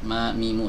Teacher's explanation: huruf mim ya hurufnya keluar dari dua bibir ya luar dari dua bibir mamimu sama seperti Meme yang ada